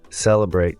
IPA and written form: ˈseləbreɪt (celebrate)